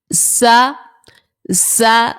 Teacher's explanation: زا سیٹی والے حروف کا آ گیا ہے، اس لیے ہم نے اس میں سیٹی نکالی